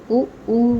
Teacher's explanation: ओष्ठ से उ बोला जाता है